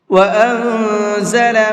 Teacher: نون ساکن کے بعد میں اخفا کے حرفوں میں سے کوئی بھی حرف آ جاتا ہے تو پھر وہاں نون کے اندر اخفا کرتے ہیں، ناک میں آواز کو چھپا کر کے پڑھتے ہیں